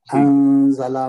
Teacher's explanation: انزلہ میں نون پہ اخفا ہوگا، غنہ کے ساتھ پڑھیں گے. زا حروف اخفا میں سے ہے.